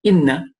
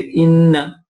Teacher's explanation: the sound of the Ghunnah is prolonged for approximately two harakat, two beats